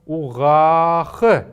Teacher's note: этот звук А, он протягивается немножко дольше